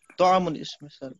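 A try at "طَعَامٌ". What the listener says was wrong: तआमुन, बहुत अच्छा, शाबाश।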